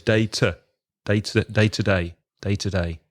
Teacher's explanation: with day to day, the to is often weak because it's in the middle of the 2 days. So it's day to day.